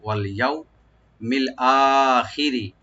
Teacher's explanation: আর ইয়াও এখানে হরফে লিন ওপেন করে পড়বো সফট করে